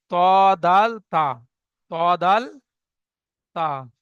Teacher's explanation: জিভের আগা এবং সামনের উপরে দুই দাঁতের গলার সাথে লাগিয়ে উচ্চারিত হয়